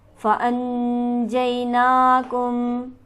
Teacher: फ़अनजैनाकुम, फ़अन के नून पर नून साकिन है और इसके बाद हरफ हल्की मौजूद नहीं लिहाजा नून साकिन पर हम गुन्ना करेंगे